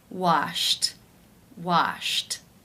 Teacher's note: the final sound in infinitive form is sh the unvoiced sh sound since it is unvoiced it is case 1 where the ed